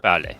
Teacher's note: it doesn't have that little puff of air